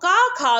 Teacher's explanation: का खा को कंठ ध्वनि माना जाता है